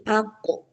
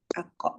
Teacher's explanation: Jangan sampai ak, jangan keluar ada napas. Kalau ak nanti seperti kaf. Kalau kaf memang ada napas. Kalau kof dia tidak.